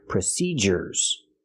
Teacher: procedures has a different sound. We use the hard j sound, like in juice and jump.